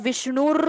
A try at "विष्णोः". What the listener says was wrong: विष्णुर नहीं विष्णुर ण के साथ ओ की मात्रा मात्रा लगी है